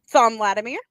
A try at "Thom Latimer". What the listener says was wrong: Tom. thought you said Thom. Right, but it's Tom. It's British.